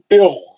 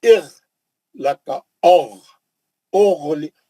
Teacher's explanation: بالکل اوپر ہی حلق سے موٹا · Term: غین